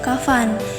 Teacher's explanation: di tengah katanya nah fonom F ini eh masuk ke dalam bunyi labiodental yang di mana adanya pertemuan antara gigi atas ee dan bibir bawah di mana gigi atas di sini berperan sebagai artikulator